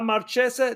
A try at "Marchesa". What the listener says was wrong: Marchesa. We don't say the ch.